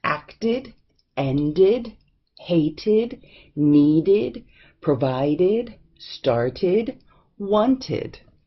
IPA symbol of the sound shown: Id